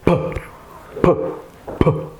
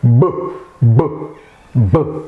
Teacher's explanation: There are differences here, and the main difference is in voicing. P is voiceless, whereas b is voiced. You can feel it at your vocal tract.